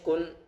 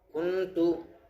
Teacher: نون کی آواز کو ناک میں چھپائیں گے